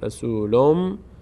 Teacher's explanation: این ضمه دوم که نماینده نون ساکن است رو میم تلفظ می‌کنیم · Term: ادغام